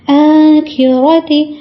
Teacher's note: آخرۃ، اب دیکھیں یہاں پہ بھی کھڑا زبر ہے، الف کے برابر لمبا کریں گے. را کے اوپر پھر سے زبر ہے تو اس کو موٹا پڑھیں گے